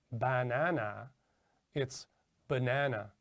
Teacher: vowel sound is fully pronounced whereas the unstressed syllables are the the vowel sounds are reduced to something called schwa which is like a uh sound